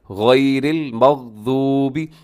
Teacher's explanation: مغضوبی میں غین کو آپ نے ہلانا نہیں ہے